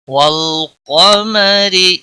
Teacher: را کو زیر کی وجہ سے باریک پڑھیں گے۔